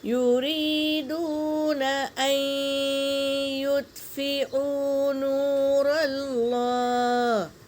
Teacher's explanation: یریدون ان یطفئوا نور اللہ، یا پر حرکت ہے، جل پڑیں گے، یا ساکن سے پہلے زیر یا مدہ، اسے ایک الف کے مقدار کھینچیں گے۔ واو ساکن سے پہلے پیش، واو مدہ، اسے بھی ایک الف کے مقدار کھینچیں گے۔ اور دیکھو حمزہ پر حرکت ہے اور یا پر تشدید ہے، تو اب ہم نون پر سکون ہے نا، تو اس کو نہیں پڑھیں گے بلکہ حمزہ کو یا میں ملائیں گے۔